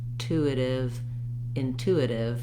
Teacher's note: the rest of the vowels in intuitive are all reduced vowels they're all the vowel like and did and didn't when i